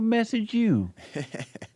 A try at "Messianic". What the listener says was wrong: You're leaving out the anic. Messianic. Yeah, it's the root word is Messiah, or the similar word is Messiah.